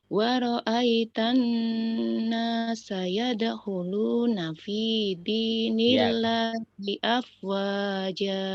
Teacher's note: Ro'aitan itu didengung, ditahan.